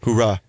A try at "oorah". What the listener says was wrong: Don't say hoorah. It's oorah. There's no H.